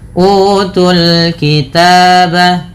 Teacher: Kemudian utul kitab pada lafalul kitab tu pada dasarnya panjang tapi karena bertemu dengan huruf sukun maka alif-alif wau ini dianggap tidak ada sehingga langsung ke huruf yang disukunkan maka tunya menjadi pendek